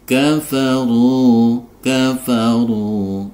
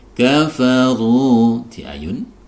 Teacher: ini ada Ro berharakat dhomah dibaca tebal kemudian ada dhomah diikuti wau sukun sehingga dia harus dipanjangkan dua